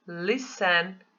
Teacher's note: quando eu falei eu não pronuncio a letrinha T